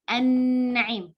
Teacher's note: lam sukun apabila bertemu dengan huruf nun seperti misalnya an-na'im, itu kan kita idghamkan